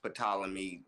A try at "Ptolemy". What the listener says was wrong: I don't think the P is. I think the P is silent.